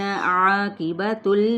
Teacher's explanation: करेंगे, का पे अलिफ मद्दा, नून की हरकत को खींचेंगे नहीं, आइन को वस्ते ग़ल्क़ से अदा करते हुए अलिफ मद्दा , क़ाफ पुर है, ता की पेश को लाम के साथ